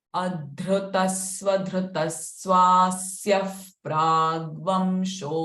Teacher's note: Swasya, the visarga sound followed by pra. So visarga sound is fa here.